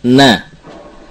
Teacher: Makhraj nun adalah mutaqarib, ya, berdekatan dengan lam wa nun wa ra, nah, yaitu dari ujung lidah dengan gusi.